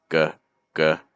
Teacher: That's the back of your tongue going high. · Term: G sound